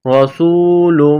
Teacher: را کو موٹا کرنا ہے، سین کو واو کے ساتھ ملانا ہے، سین میں سیٹی کی آواز پیدا کرنی ہے